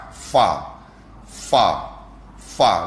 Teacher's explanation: gigi gunting Atas Tekan perut bibir bawah